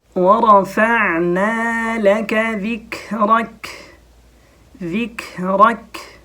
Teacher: حرف کیف جو جب ساکن ہو تو اس میں ایک صفت پائی جاتی ہے جس کو بولتے ہیں ہمس